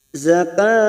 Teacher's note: kita panjangkan 4 harokat karena ini hukumnya mad arid li sukun